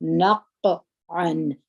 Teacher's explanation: همس وکړي نفسن نقعن قاف دی باید قلقله پکې کې وي دوه صفات پکې کې دي یو صفات د جهر دی چې اواز په زور د خولې سره وځي بل صفات د قلقلې دی